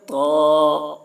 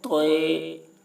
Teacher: جبکہ عربی میں اس کو پڑھتے ہیں تو، معروف پڑھتے ہیں، اور اردو میں مجہول پڑھتے ہیں توئے